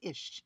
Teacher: They may drop the F and call it ish